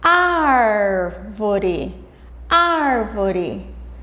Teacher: A sílaba ar, que é composta de uma vogal e uma consoante, é a sílaba tônica, a sílaba mais forte.